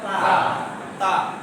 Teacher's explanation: তাটা কোথায় থেকে উচ্চারিত হয়? জিহ্বার আগা উপরের দুই দাঁতের গোড়ার সাথে লেগে